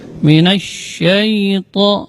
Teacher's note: Kemudian minasyaiton, kemudian ketika pengucapan huruf sya, dia di huruf sya keluarnya dari tengah-tengah lidah. Ini termasuk huruf tafasyi.